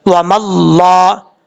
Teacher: واو زبر وا میم لام زبر مل، میم کے بعد جو الف ہے پھر الف ہے پھر لام ہے، تینوں حرف کو چھوڑ دیں گے، میم کو ڈائریکٹ لام کے ساتھ جس لام کے اوپر شد ہے اس کے ساتھ کنیکٹ کریں گے